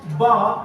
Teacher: bar is a bilabial voice stop sound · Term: bilabial voiced stop sound